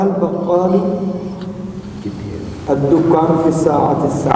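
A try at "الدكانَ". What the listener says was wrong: الدکان کو نون پہ ساکن کر گیا, کیوں؟ ڈنڈی نہیں مارنی. بکال تو آپ نے صحیح پڑھا نا, البکالو صحیح پڑھا ہے. الدکان نا, بالکل ٹھیک ہے.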